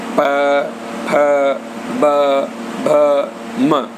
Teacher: उसके बाद आता है ओष्ठ्य, यानी कि दोनों होठों की मदद से, दोनों ओठों की मदद से जब कोई वर्ण उच्चारित किया जाता है तो उसे ओष्ठ्य कहा जाता है। जैसे प को बोलने पर हमारे दोनों होठ मिल जाते हैं, प, फ, ब, भ, म।